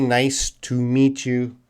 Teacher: Tu is reduced in English to ta.